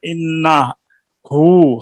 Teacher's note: हमने पेश की जगह उल्टा पेश पढ़ के वाव की आवाज निकाली है, दूसरी जगह जेर की जगह या की आवाज निकाली है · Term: वाव के साथ सिला